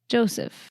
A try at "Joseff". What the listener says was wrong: No, Joseff. Joseph with 2 F's, okay? Joseff. No, it's too much enunciation. Joseff.